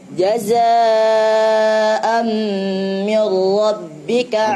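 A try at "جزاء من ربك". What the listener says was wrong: Hati-hati, antum ketika ketemu dengan huruf ra, sebelumnya kasrah, itu kasrahnya kurang jelas. Me, salah. Mi. Jazaa'an mir.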